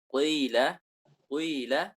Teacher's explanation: kasrah yang diismamkan atau dicampur dengan suara dhammah